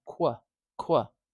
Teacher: So immediately we've got a consonant cluster right here. We've got a k, w consonant cluster